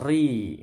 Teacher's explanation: ri ini ro-nya tipis tarqiq ya, karena kasroh.